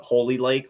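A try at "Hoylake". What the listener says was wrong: I don't think it's Holy, but I believe like there's no L prior to the Y. Holy, you're saying Holy Lake. It's H-O-Y-L.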